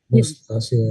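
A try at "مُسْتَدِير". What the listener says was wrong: Pakai dal, sifir mustadir.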